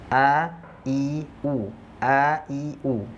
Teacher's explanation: Kalau kita letakkan telapak tangan kita di depan mulut, itu nggak akan ada udara yang keluar. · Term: jahar